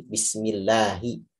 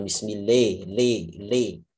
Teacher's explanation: Itu kan mengarah ke imalah kan, memiringkan huruf, memiringkan suara huruf ya, sehingga dia nanti berada di antara fathah dan kasroh.